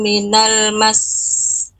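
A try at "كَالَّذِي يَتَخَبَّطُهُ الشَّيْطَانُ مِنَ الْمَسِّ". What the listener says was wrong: Ya, minal mas, agak tekan sedikit. Ya, minal mas, agak ditekan sedikit, Bu. tasdidnya iya kurang.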